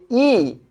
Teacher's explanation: অবস্থান অনুসারে এটা সম্মুখ, উচ্চতা অনুসারে এটা কোথায়, এইটা উচ্চ, আর এই যে ঠোঁটের উন্মুক্তি অনুসারে এটা কি স্বরধ্বনি, এটা সংবৃত স্বরধ্বনি।